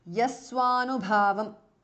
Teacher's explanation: visarga changes to su there. Swa anubhava.